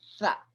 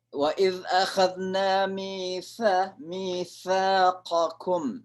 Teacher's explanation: Jadi kayak digigit ujung lidah kita, tapi didorong pakai udara dengan keras, sa. Ya. Biasanya kalau ditulis sama bahasa Inggris, th, pakai t lalu h, sa.